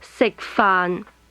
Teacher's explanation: Is low level, low level.